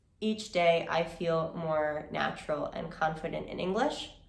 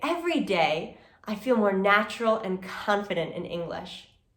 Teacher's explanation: I put on a smile, I make my intonation happier, right? My voice goes a bit higher. There's just more power and more motivation behind the words I'm saying.